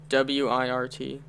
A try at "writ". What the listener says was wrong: Writ. WRIT. You said WIRT.